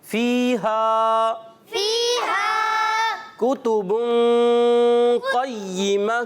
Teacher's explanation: تنوین کے بعد قاف حرف اخفا میں سے آیا, جس کی وجہ سے یہاں اخفا کا قاعدہ ہوگا, یعنی ہم نے یہاں پر غنہ کرنا ہے, ٹھیک ہے. · یہ یا مدہ اور یہ الف مدہ دونوں کو ایک ایک الف کھینچ کر ادا کریں گے